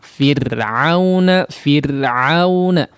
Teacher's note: Di sini juga kondisi huruf ra ya, yang bertanda sukun kemudian didahului oleh huruf yang berharakat kasrah ya. Setelah huruf ra-nya tidak dijumpai huruf isti'la maka dibaca tipis ya.